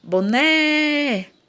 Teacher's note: Ó, a sílaba tônica é o né. Então, é a última.